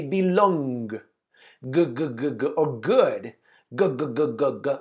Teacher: the sound of the G makes your sound vocal cords vibrate